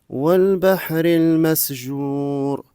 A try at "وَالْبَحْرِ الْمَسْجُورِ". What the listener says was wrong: والبحر المسجور الجيم. المسجور نعم، إذن انظر إلى إخراج حرف الجيم والبحر المسجور. جاء جي جو.